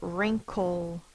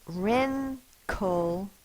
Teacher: my tongue is squished up in the back I'm making the sound through my nose if you touch your nose your nose is going to vibrate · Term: NG sound